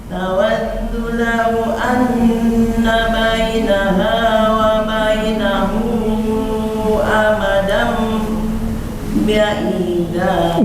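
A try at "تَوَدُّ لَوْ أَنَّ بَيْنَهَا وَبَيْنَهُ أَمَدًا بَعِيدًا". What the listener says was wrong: Gak boleh eureun heula tuh. Itu mah ada sakta. Sebetulnya suara Ibu udah bagus. Cuman tadi ada perasaan sepertinya ingin cepat selesai. Sehingga nafasnya Ibu nggak sempurna. Jadi yang tadinya harusnya bacaan Ibu santai, tenang, kemudian tahanannya diamalkan, jadi tidak diamalkan karena ingin cepat selesai dan nafasnya buru-buru.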